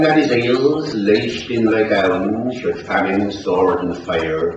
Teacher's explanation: people from the west of England for example would notice the r after the vowels